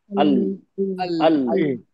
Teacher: आगे लग रहा है, मसूड़ों पे लग रही है अल जबान। ऊपर के किनारों अल नीचे जड़ करने लग रही है।